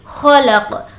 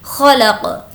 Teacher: خو کی آواز حلق کے اندر سے تھوڑی کھرکھری آئے گی اور اب ہم یہاں پر وقف کر رہے ہیں تو قاف پر جزم دے دیں گے، خلق۔